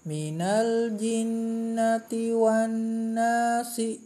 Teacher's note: Nun bertasdid atau mim bertasdid adalah bacaan hunnah, yaitu membaca dengung 2 harokat, ya.